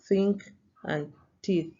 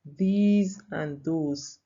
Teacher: For example, the theta sound which is close to V sound, that has the example think and teeth, with the next one that has these and those. The first theta sound is a voiceless sound, while the next sound is a voiced sound. As when you put your hand, you'll be able to feel the vibration.